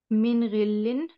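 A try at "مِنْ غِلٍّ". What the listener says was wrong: With the shadda, you have to pronounce it a little bit more with force, I guess. Min ghillin.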